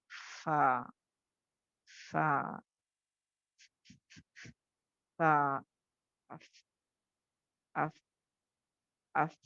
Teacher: आवाज बंद होके सांस थोड़ी चलती है · हम्स क्यों, इसको हम्स का लेटर क्यों कहा गया, बिकॉज जब आप फा को अदा करोगे तो अदा करते वक्त इसमें ना आवाज बंद होती है और हल्की सी सांस चलती है